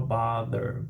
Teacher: Aí eu tenho o som do TH vozeado, vibração das cordas vocais, entre os dentes, interdental